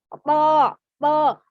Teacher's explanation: Itu adalah di ujung lidah bertemu dengan pangkal gigi atas, kemudian isti'la ditebalkan, pangkal lidahnya sedikit dinaikkan ketika melafalkannya. Akan tapi ketika dia berharokat fathah, bukan bibirnya yang dimonyongkan, bukan to, tapi to. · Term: huruf to